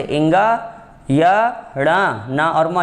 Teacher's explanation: वे वर्ण जिनके उच्चारण में वायु मुख और नाक दोनों से बाहर निकलती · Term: अनुनासिक